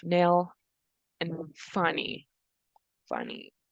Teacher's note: That's a voiced alveolar nasal sound because the tongue gets in contact with the alveolar ridge to be pronounced.